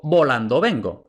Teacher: volando va detrás de pausa, por tanto B, oclusiva, pero luego vengo, tenemos esta B aproximante